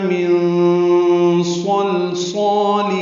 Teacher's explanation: من صلصال میں نون ساکن کے بعد صاد آنے کی وجہ سے اخفا ہے، نون کی آواز چھپائیں گے. صاد پر ہے، لام ساکن پہ اظہار ہے، یہ لام باریک ہے.